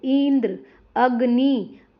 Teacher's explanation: इंद्र यहां पे देखो इंद्र अग्नि तो यहां पर क्या है? इ और अ पर ज्यादा जोर दिया जाता है। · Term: बलाघात